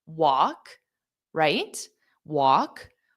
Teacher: the L is not pronounced on the word walk. So it's just walk, right?